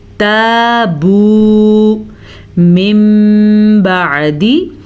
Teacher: تابو یہ ہو گیا الف مدہ اور یہ ہو گیا واو مدہ، دونوں کو کھینچ کے پڑھیں گے · جب بھی نون ساکن یا نون تنوین کے بعد جب حرف با آ جائے تو نون ساکن یا تنوین میم میں بدل جاتے ہیں، دونوں ہونٹ بند ہو جاتے ہیں اور غننے کی آواز پیدا ہوتی ہے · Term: اقلاب